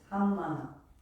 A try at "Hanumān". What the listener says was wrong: Hanumān. Hanumān. Not Hanumāna. Hanumān.